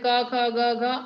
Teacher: कवर्ग का उच्चारण स्थान है कंठ